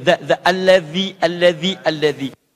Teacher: kalau mengucapkan zal itu sedikit digigit lidahnya